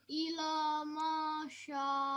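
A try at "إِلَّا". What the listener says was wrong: It's not ila. We have lam mushaddad, right? Double. We have to make double sound. So illa.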